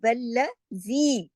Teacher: زی کو 2 حرکات کھینچا جائے گا کیونکہ یہ یا مدہ کے ساتھ ہے